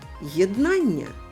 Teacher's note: Є на початку два звуки, тож плюс оди. Дві букви н дають -1, бо це один звук подовжений. Тож в цьому слові однакова кількість букв і звуків.